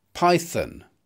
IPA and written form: ˈpaɪ.θən (python)